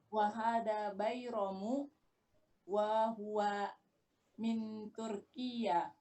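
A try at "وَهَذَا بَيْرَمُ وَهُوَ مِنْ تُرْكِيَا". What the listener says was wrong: Bagus. Min Turkiya. Nggak pakai tasydid ya-nya.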